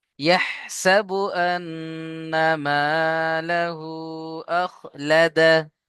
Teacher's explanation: আখলাদাহু হবে না, আখলাদাহ, হা সাকিন করে পড়বেন